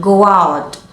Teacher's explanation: instead of saying go out with a clear break between the words, we link them together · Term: linking